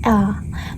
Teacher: L itu menggunakan langit-langit depan